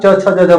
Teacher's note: आपका जीभ जो है तालू में सटेगा और इसका उच्चारण स्थान इस प्रकार से तालू होता है